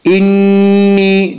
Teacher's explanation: نون مشدد غنہ ہوگا، 1 الف کی مقدار غنہ کریں گے۔ انی اعلم میں مد منفصل ہوگا۔